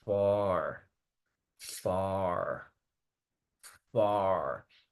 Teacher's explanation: Entonces, tengo que cerrar más la boca, literalmente, por eso es una vocal cerrada. Tenemos que cerrar más la boca al pronunciar esta, no decir A, sino uh, uh, y luego extender ese sonido. So you would say far, far, far.